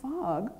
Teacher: this one starts with an unvoiced labial dental fricative so be sure to have your lower lip touching your teeth